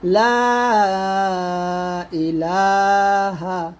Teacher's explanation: লা এক লিফ এখানে 3 টান দিবেন অবশ্যই, যেহেতু পরে হামজা আসছে।